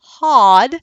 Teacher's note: you have it a little bit raised for that more rounded ah as in odd